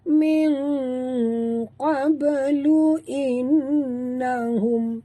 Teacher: nun mati bertemu qaf, sorokkan bunyi nun ke dalam qaf disertai dengung, ikhfa hakiki